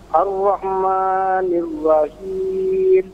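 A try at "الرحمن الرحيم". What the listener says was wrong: Baik, ma-nya jangan terlalu panjang, 2 harokat saja. Ar-Rahmanir-Rahim.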